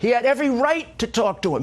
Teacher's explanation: voice does seem to get a little strange, almost like a version of vocal fry